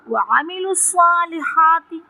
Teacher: صاد پر مشدد ہے، یعنی اس صاد کو جب لام سے ملا کے پڑھیں گے تو تفخیم کریں گے، اور زبر یعنی الف کے ساتھ پڑھیں گے تو ہم اس کو لمبا کر کے پڑھیں گے اور تفخیم کریں گے۔